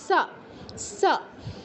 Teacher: দন্তে নিচের উপরের পাটির যে দাঁত এটাকে স্পর্শ করবে জিহ্বা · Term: দন্তস